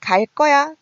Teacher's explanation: 일단 발음은 [갈 꺼야] 된소리로 나고 있습니다